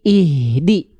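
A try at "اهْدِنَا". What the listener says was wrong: Ih jangan jadi H kecil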